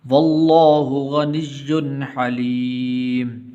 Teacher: غنہ نہیں کریں گے اس لیے کہ آگے حا حروف حلقی میں سے